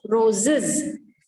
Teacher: the sound of that s or es will be is.